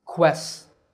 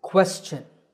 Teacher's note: The first syllable is made with a k combined with a w sound by rounding your lips.